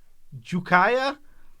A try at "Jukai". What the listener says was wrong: It's Jukai. You just added an extra I. Or extra A.